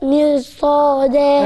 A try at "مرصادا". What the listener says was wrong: الراء مش حلوة. لا مش هعمل لها صوت. مرصادة، مرو. برو برو، قولوا معايا برو برو